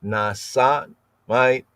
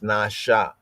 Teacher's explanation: the S is not pronounced as a S, but as a sh